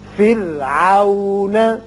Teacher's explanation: یہ را باریک ہوگا اس لیے کہ پیچھے کسرہ یعنی زیر ہے